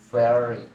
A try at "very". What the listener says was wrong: Nggak pakai F, tapi very.